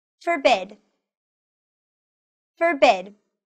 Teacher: the stress of the word is on the second syllable